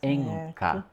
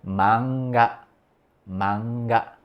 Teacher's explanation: Aí tem uma que articula lá no fundo da garganta, que é o som de K e do G.